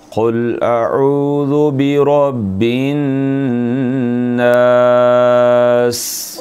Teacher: सीन में सीटी है और ये बारीक है